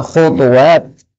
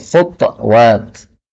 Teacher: khutuwat, ta-nya boleh disukun menjadi khutwat.